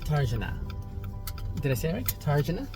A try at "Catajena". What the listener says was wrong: You don't need to say R. It's not Catajena, it's Catajena.